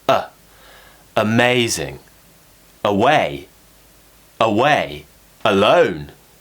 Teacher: look at a few more words which have the schwa replacing the letter A in a weak syllable